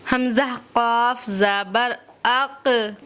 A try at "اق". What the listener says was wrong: موٹا کریے. مخرج سے آپ نے ادا کر. دیکھو مخرج سے ادا کرنا الگ چیز ہے. آپ کا مخرج بالکل صحیح ہے لیکن صفات صحیح نہیں ہے. صفات کو بھول گئی آپ. قا آقو، منہ کے اندر ہوا بھرنی چاہیے.